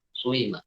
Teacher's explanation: maksudnya suara dhammah dicampur dengan kasrah, suima. Seperti suima ketika kita lambatkan. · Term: ismam